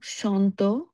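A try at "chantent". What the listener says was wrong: এখানে আসলে সন্তের এন এর সাউন্ডটা আসে না, হ্যাঁ, সৎ হয়, সন্ত হয়, হ্যাঁ, সন্ত না আসলে, ঠিক আছে, সৎ শব্দ, এন এর সাউন্ডটা স্পষ্ট আসবে।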